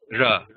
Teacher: this ra is with the tongue in the front of the mouth.